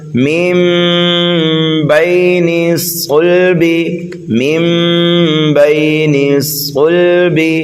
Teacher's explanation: با کو یا لین کی وجہ سے جلدی پڑھیں گے، نون کو صاد میں ملائیں گے۔